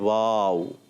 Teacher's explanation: دونوں ہونٹوں کی گولائی سے واو ادا ہوتا ہے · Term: حروف شفویہ